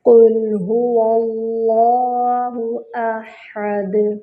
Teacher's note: قاف پر ضمہ ہے، ہونٹوں کو مکمل گول کریں گے اور کاف کا مخرج ہے اقصی اللسان، یعنی زبان کی جڑ جب اوپر نرم تالو سے لگتی ہے تو قاف ادا ہوتا ہے۔ لام ساکن ہے، لام کو ہلانا نہیں ہے۔